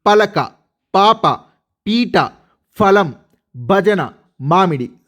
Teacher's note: ప ఫబ్బ మ వీటిని లేదా గుణింతాక్షరాలను పలికేటప్పుడు మన పెదవులు కలుస్తాయి.